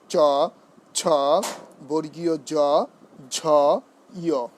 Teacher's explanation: জিভের মূল তালুর সম্মুখ ভাগ স্পর্শ করে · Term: তালব্য